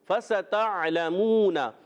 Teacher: واو مدہ، ایک الف کھینچنا ہے، حرکات کو بغیر کھینچے ادا کریں گے.